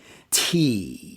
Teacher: t is the result of my tongue pressing off the back of my top two front teeth